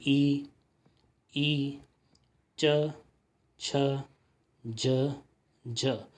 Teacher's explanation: तो आप देखेंगे कि आपकी जो जीभ है ना वो आपके तलवे से लगती है ना। तलवे जो है उस आपका मुंह में जो ऊपर वाला भाग है उससे टच होती है। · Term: तालव्य